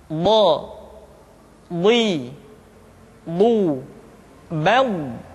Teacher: diucapkan dengan menyentuhkan dua sisi lidah kita dengan geraham-geraham atas